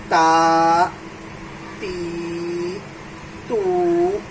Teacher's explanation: زبان کی نوک اس کے جڑ میں مل کے، معاف کیجیے گا، جڑ میں، کنارہ نہیں، ثنایا علیہ کی جڑ سے مل کے زبان کی نوک تا ادا ہوتا ہے